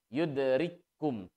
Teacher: Ya, seolah-olah ditasdid langsung. Yudrikum tanpa menunaikan sifat hams dan sifat syiddah. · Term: idgham mutamathilain